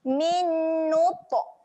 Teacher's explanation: huruf ta ketika mati dia ada lantun sifatnya. Lantunkan bunyi huruf ta mati.